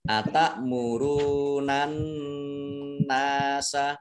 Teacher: An-nasa alif lamnya alif lam syamsiyah tidak dibaca, langsung masuk ke huruf berikutnya yaitu nun, ditandai dengan tasdid. Nun tasdid dibaca gunnah atau mendengung, ditahan 2 harokat. Atak murunan nasa nun fathah alif mat tabi'i dibaca panjang 2 harokat. · Atak muruna ra'dumah wawu sukun matobi'i dibaca panjang 2 harokat. An-nasa alif lamnya alif lam syamsiyah tidak dibaca, langsung masuk ke huruf berikutnya yaitu nun, ditandai dengan tasdid